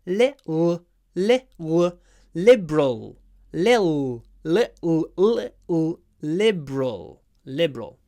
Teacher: here we have a light L at the beginning